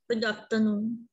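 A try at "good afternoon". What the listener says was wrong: आफ्टरनून नहीं, गुड, हाँ गुड आफ्टरनून। तो ये जो आर है इसको साइलेंट रखना है। तो प्रोनंसिएशन में आप आर नहीं बोलोगे, आप क्या बोलोगे? गुड आफ्टरनून, आफ्टरनून,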